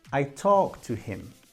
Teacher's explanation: You only hear one of the T sounds, but I'm actually saying I talked, past tense, to him. The problem is, when we speak naturally, the T of ed disappears because we have that T and also the T of to.